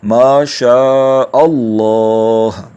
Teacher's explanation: تو شاء کو لمبا کریں گے اور پھر حمزہ کو اللہ والے لام سے ملا دیں گے۔ اسی طرح سے ماشاءاللہ نہیں کہتے، ماشاء اللہ، یہ اس کا درست تلفظ ہے۔